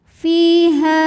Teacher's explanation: karena ada Alif didahului harakat fathah maka ha panjang dua harakat